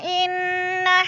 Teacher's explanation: انا کی نون مشدد ہے، غنہ کریں گے، سختی سے جمع کر پڑھیں گے